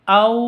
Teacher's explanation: tanwin bertemu dengan wawu cara bacanya masuk ke wawu disertai dengung dua ketuk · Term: idgham bi gunnah